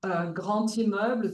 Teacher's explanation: grand immeuble, the D is pronounced like a T